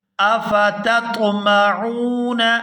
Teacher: یہاں تا اور طا دونوں ہی ایک جگہ پر ہیں لیکن دونوں میں فرق کر کے ادا کریں گے تاکہ معنی کے اندر کوئی تبدیلی نہ آئے۔